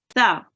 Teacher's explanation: it is often replaced with sin, so make sure you don't read it as sa, you read it as tha. Okay, so sin here is pronounced sin, and this letter here is pronounced tha.